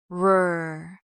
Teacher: In American English, the R is pronounced by curling your tongue slightly upward toward the roof of your mouth without touching it. Your lips might round slightly. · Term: American R sound